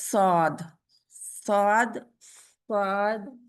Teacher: स्वाद स्वाद स्वाद अगर स्वाद करेंगे तो यह ठीक नहीं स्वाद स्वाद स्वाद स्वाद के लिए क्या होता है आप अपना होठ गोल करने की जरूरत नहीं है उनमें गोलाई नहीं लाए